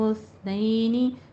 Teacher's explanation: سین کی سیٹی کی آواز نہ آئے، سا ہے، یہ سا کو نرمی سے پڑھنا ہے